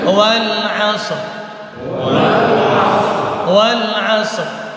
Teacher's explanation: Maka setelah kita matikan huruf shad, sedikit terangkat bibir bawah supaya rohnya kelihatan tebal. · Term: roh tebal